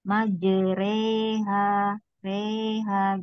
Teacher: Imalah jadi ini dimiringkan. Majereha reha gitu.